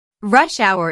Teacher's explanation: notice that rush hour is a compound noun with the main stress on the first word